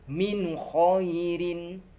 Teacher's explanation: Nun sukun bertemu kho yang terletak di ujung tenggorokan.